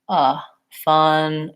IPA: ə